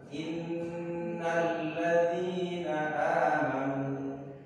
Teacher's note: Karena gunnah itu artinya dengung, maka cara membacanya nanti ketika huruf nun dan mim ini bertasydid, itu cara bacanya didengung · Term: bacaan gunnah